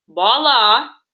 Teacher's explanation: Я немножко округляю свой ротик и говорю немножко как похоже на О.